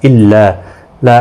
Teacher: الف مدہ ہے، دونوں کو 1 الف کی مقدار کے برابر کھینچ کر پڑھیں گے